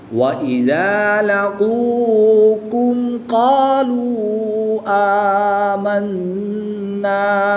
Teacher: قاف کو پر پڑھیں گے, اس کاف کو باریک پڑھیں گے, پھر اس قاف کو پر یعنی موٹا پڑھیں گے.